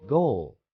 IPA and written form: ɡoʊl (goal)